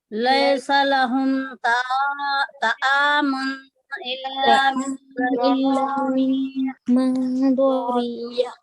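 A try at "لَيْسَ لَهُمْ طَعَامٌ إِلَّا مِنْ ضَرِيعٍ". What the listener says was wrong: لیسا میں حرف لین میں مجھول آواز آئی، پھر تو پہ تو کا مخرج صحیح نہیں نکلا.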